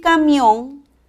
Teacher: la mayor fuerza de voz está en la última sílaba termina en n es una palabra aguda y debe de tirarse